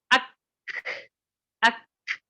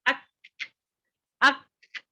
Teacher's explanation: کاف حرف میں ہمس میں سے ہے، یہ جب ہوگا تو سانس جاری رہے گی